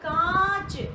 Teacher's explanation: कांच बोलते समय जो आ की ध्वनि आई, वहां पर श्वास वायु मुंह से भी निकली और नाक से भी निकली, कहीं भी अवरुद्ध नहीं हुई, कहीं भी रुकी नहीं, कहीं उसमें रुकावट उत्पन्न नहीं हुई। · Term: अनुनासिक